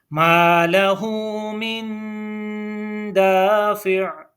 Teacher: मिन दाफ़िअ, दाफ़िइन है, यहाँ पे हमने वक्फ किया और वक्फ की हालत में ये दाफ़िअ पढ़ा जाएगा, आइन को साकिन कर देंगे।